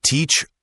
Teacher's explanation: teacher has a longer e sound and then that soft ch sound. Teacher, make sure the sound is a neutral vowel, not too strong.